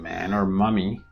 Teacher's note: In English, the most common nasal consonants are m as in man or mummy produced with bilabial closure meaning the lips come together